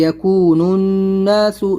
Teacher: नून नून दोनों मिल जाएंगे, यहाँ पर अलिफ लाम को नहीं पढ़ेंगे